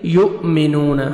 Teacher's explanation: حمزہ جزم ہے، جھٹکے سے پڑھیں گے، واو مدہ، نون کو 1 سیکنڈ کھینچیں گے